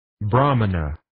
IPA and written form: 'brɑːmənə (Brahmana)